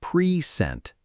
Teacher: When we stress the first syllable, present, it's a noun. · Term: Stress on the first part